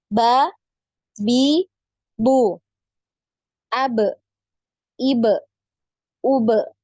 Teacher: Kemudian untuk huruf ba ini kita tahu ya, sudah masyhur ya, huruf ba ini termasuk huruf yang dipantul ketika disukun ya, punya sifat qalqalah ya. Nah, dan huruf-huruf qalqalah ini sudah bisa dipastikan bahwasannya huruf-huruf qalqalah ini tertahan suaranya, juga tertahan aliran nafas.